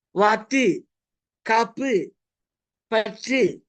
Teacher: ஒரு மாத்திரை அளவுள்ள உகரத்தை குறுக்கி அரை மாத்திரையில நம்ம உச்சரிக்கிறதுனால அது குறுகிய ஓசையுடைய உகரம், குற்றியல் உகரம் அப்படின்னு சொல்றோம்.